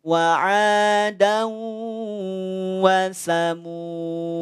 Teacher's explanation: Jadi kalau berhenti di wasamuda maka tidak dibaca panjang dalnya, tapi sukunkan.